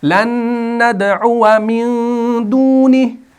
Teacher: इस अलिफ को नहीं पढ़ा गया वसल की सूरत में।